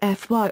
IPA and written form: ˈfaɪ (Phi)